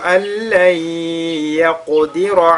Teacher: nun sakin suivi de la lettre lam. On fusionne donc ce nun dans la lettre lam. On fait idgham bila ghunna.